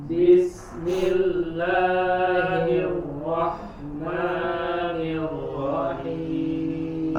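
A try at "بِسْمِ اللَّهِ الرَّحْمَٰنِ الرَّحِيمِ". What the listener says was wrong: Oke, masih sedikit kepanjangan 2 harokat la ma bismillahirrahmanirrahim 2 harokat sebentar saja. Bismillahirrahmanirrahim.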